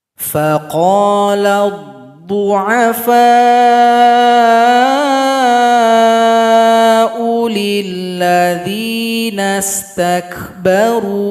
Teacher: Karena hamzah dhamma berjumpa dengan alif maka dipendekkan saja. Harusnya dia kalau mau dipanjangkan harus berjumpa dengan waw sukun.